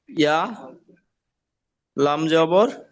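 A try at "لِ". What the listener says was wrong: আবার ইয়া কেন হবে?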